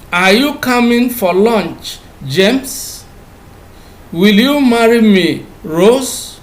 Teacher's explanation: you have the first part with a falling tone and the second part with a rising tone